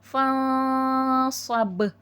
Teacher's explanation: با حرف قلقلہ ہے، با کی آواز ہمیں ریپیٹ سنائی دے گی